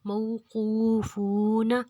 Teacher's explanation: مئو کو ہم نے لمبا نہیں کرنا، قو کو ہم نے دو حرکت لمبا کرنا ہے، فو کو ہم نے دو حرکت لمبا کرنا ہے، کیونکہ واؤ پہ جازم اور اس کے پیچھے پیش ہے تو دو حرکت لمبا ہو گئے۔